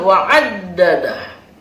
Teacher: ketika disebut wa'addadah itu ada tasdid, dikuatkan dengan sebutan wa'addadah